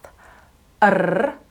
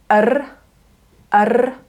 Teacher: it's made by repeatedly tapping your tongue against the top of your mouth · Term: rolled R